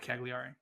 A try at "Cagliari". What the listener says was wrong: Cagliari. You gotta hold the G a little bit.